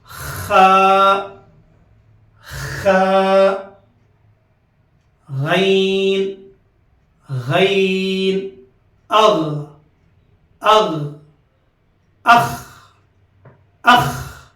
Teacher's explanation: اب آئیے غین اور خا کا مخرج جو ابتدائی حلق کا حصہ ہے یہ جو ہے سو غین اور خا کا مخرج ہے.